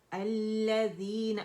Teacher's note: عارضی وقف کے عارضی سکون دیا نون کو تو مد عارض للسکون میں نے اسے بنا دیا